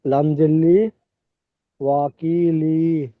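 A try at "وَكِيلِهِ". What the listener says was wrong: ওয়াকিলি। হা খাড়াজের হি। ওয়াকিলি লাম টান হয়ে যাচ্ছে, খেয়াল করে পড়বেন, ওয়াকিলিহি। ওয়াকি। ক পেঁয়াজের কিটা টান হবে, ইয়ার মধ্যে ইয়ার সঙ্গে ডান দিকে যে রেস্টে ক পেঁয়াজের কি টান হবে। লি টান হবে না।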